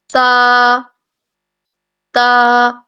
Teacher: زبان کی بالکل نوک سی بنی ہوئی ہے اور وہ اوپر 2 دانتوں کی جڑ کے ساتھ لگ رہی ہے، ٹھیک ہے؟ تا، تا، آپ خود بھی اس بات کو نوٹس کریں گے کہ جب آپ تا ادا کریں تو آپ کی زبان جو ہے وہ نوک بن جاتی ہے اس کی، اور وہ اوپر جا کے ثنایا علیا کی جڑ سے لگتی ہے۔